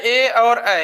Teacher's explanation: ए और ऐ का जो है उच्चारण स्थान कंठ तालव्य होता है